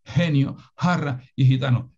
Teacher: la pronunciación aspirada del fonema velar